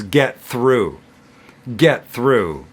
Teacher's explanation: And because the next word starts with a T, TH in this case, through, then we can drop the T off of get and it becomes get through.